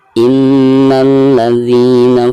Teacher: ada nun yang bertasdid ya, itu merupakan salah satu daripada huruf gunnah, maka cara membacanya itu harus ditekankan disertai dengan gunnah 2 atau 3 harokat